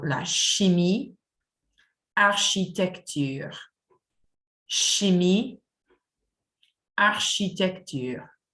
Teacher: The sound CH has a sh sound instead of k or ich, as we might say in English.